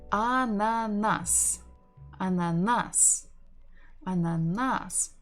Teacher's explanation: We stress the final syllable.